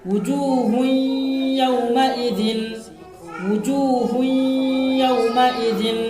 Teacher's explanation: تنوین کی مثال دیکھیے، وجوہ یومئذ، وجوہ یومئذ، تنوین کے بعد حرف یرملون میں سے یا آیا ہے، تنوین کو یا سے ملا کر غنہ کے ساتھ پڑھیں گے